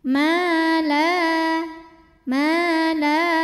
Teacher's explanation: Ini hukumnya adalah mad tabi'i zahiri karena ada alif yang sebelumnya berbaris fathah, maka dibaca panjang 2 harokat. Ya 2 harokat itu jangan lama-lama, kurang lebih 1 ayunan ya.